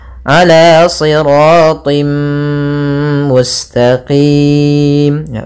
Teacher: bertemu dengan huruf gunna atau huruf Idam bunah yaitu huruf mim cara membacanya kita masukkan tanwinnya ke mim sambil ditahan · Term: idgham bi gunnah